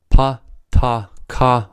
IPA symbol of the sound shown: p t k